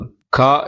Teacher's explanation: நாக்கின் முதற் பகுதி மேல் அன்னத்தில் ஒட்டும் போது கா என்னும் எழுத்து பிறக்கிறது. நாக்கின் முதற் பகுதி, அதாவது அடிநாக்கு, மேல் அன்னத்தின் அடிப்பகுதியை ஒட்டும் போது கா என்னும் எழுத்து பிறக்கிறது.